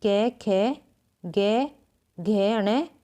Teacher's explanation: कंठ्य वर्ण है ए, आ, ए, क, ख, ग, घ, ण, है। ये कंठ्य व्यंजन है, कंठ से बोले जाते हैं।